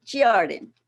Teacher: begins with the emphasis on the first syllable not the emphasis on the second syllable